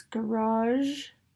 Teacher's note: One of our few words that has an edge. Our voiced palatal-alveolar fricative on the end.